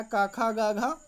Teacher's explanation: कंठ से ध्वनि निकल रही है, इसलिए इसका उत्तर सही होगा कंठ।